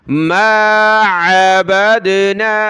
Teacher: عین کو گلے سے نکالیں اور یہاں دال پر ہم نے قلقلہ کرنا ہے، با کو دال کے ساتھ ملا کر۔